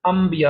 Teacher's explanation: با کی بجائے ہم نے میم پڑھ دینا ہے، انبیاء، بلکہ نون اور با دونوں کی بجائے میم پڑھ دینا ہے، نہ نون پڑھنا ہے نہ با پڑھنا ہے ، ہم نے میم پڑھنا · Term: اقلاب